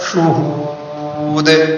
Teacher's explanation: قلقلہ، اس لیے کہ دال قلقلہ کا حرف وقف کی وجہ سے ساکن ہو رہا ہے